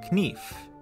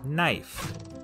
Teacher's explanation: A good example of this change is in the word knife. In Middle English, it was pronounced knief, but after the vowel shift, the K became silent